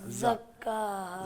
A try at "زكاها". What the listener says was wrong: زبان کو آپ پیچھے لے جائیں, دونوں دانتوں کو آپس میں جوڑیں. زبان کو پیچھے لے جائیں, زبان کو آپ اوپر والے دانت سے مسلسل لگا کے رکھ رہے ہیں. لگا کے رکھ رہے ہیں نا, نہیں لگا کے رکھ رہے ہیں. اچھا چلے لگائے بغیر پڑھیں.